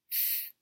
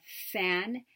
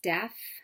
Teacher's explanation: fricatives our speech sounds articulated with a hiss or friction so we'll start with a place of articulation at the lips and teeth the voiceless fricative as in the beginning of fan and the end of death